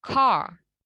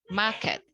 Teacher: di British English, sound R-nya itu biasanya tidak di-pronounce atau tidak disebutkan. Apabila R-nya itu comes after a vowel atau datang setelah huruf vokal in the same syllable dalam suku kata yang sama.